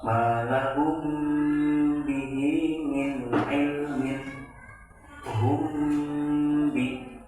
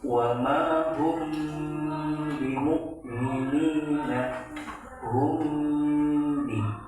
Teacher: Mim sukun bertemu dengan huruf ba. Cara membacanya adalah dengan mendengungkan atau menambahkan gunah yang dipanjangkan 2-3 harokat. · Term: ikhfa syafawi